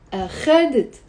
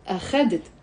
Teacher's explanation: The stress is on the خ.